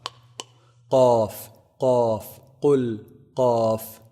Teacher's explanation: off is pronounced from the deepest part of the tongue so the closest to the throat